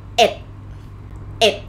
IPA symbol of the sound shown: èd